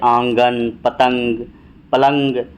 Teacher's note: اس میں اس کی آواز ناک سے نکلتی ہے، جیسے آنگن، پتنگ، پلنگ۔ اس میں نون پوری طرح سے نہیں پڑھی جاتی ہے بلکہ ناک سے ہی اس کی آواز ناک میں ہی اٹک جاتی ہے، اسے نون گنہ کہا جاتا ہے۔